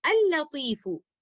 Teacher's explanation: तो लाम अतारीफ का ताल्लुक बाद में आने वाले लाम के साथ एक मुतमासिल ताल्लुक है, मुतकारिब ताल्लुक नहीं है। तो यहाँ पर पहले वाले लाम को दूसरे वाले लाम के अंदर मुकम्मल तौर पर मर्ज करते हुए हम इसको इस तरह से पढ़ेंगे अल लतीफू, और इस ताल्लुक को हम कहेंगे इदगाम मुतमासिलान सगीर रिलेशनशिप।